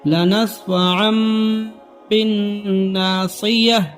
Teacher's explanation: تنوین یا نون ساکین کے بعد با آئے تو نون کو میم سے بدل کر گنہ اور اخفا کے ساتھ پڑھیں گے، اس کو اقلاب کہتے ہیں۔